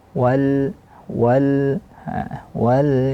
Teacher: wa dimoncongkan dulu kemudian baru baca lam yang sukun